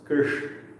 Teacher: é um sibilante que é pronunciado no céu da boca